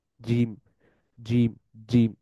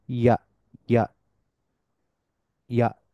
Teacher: জিমের ক্ষেত্রে প্রায় পুরো জিহ্বাটা মধ্যভাগ থেকে শুরু, একেবারে সামনের ভাগ পর্যন্ত জিহ্বাটা তালুর সাথে মিশে যায়, কিন্তু ইয়া এর ক্ষেত্রে শুধুমাত্র মধ্যভাগটা টাচ করে, জিহ্বার সামনের অংশটা টাচ করে না।